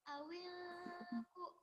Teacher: Cara bacanya ditahan dan disamarkan non matinya. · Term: ikhfa